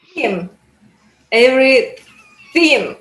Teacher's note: So, so that TH sound, actually, I will try to find a video to send it. TH, your tongue is between your teeth and the air is blowing out around your tongue